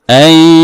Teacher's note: এখানে নুন সাকিনের পরে ইয়া আসছে, ইদগামে মাআল গুণনা হয়েছে, এই জন্য এই ইয়ার মধ্যে গুণনা করতে হবে একালিফ, এই নুনের মানে এই নুনকে ইয়ার সাথে মিলাইয়া গুণনা করতে হবে একালিফ।